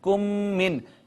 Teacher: میم ساکن کے بعد میم آئے تو میم کا میم میں ادغام کر دیتے ہیں، اور اس ادغام کو کہتے ہیں ادغام میں شفوی۔